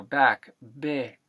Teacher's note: taking that a sound and flattening it to e is a very good principle to live by. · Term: a to e phenomenon